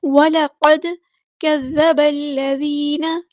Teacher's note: وَلَقَدْ كَذَّبَ الَّذِينَ، لام باریک پڑھیں گے، لائٹ لیٹر ہے، قاف ہمارا ہیوی لیٹر ہے، پورا ادا کریں گے، دال ساکن پر کلکلا ہوگا